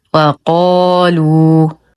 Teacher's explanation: ايضا لا نقول وقا بترقيق القاف وهذا ايضا خطا والصواب وقالوا نتم ضمه اللام مع الترقيق بعدها واو ساكنه فهو مد طبيعي انظر لحرف الذي يليه مباشره